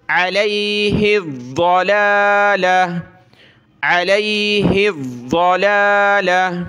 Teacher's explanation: جب رکیں گے وقف کریں گے تو وقف میں یہ گولتا ہا بن جائے گی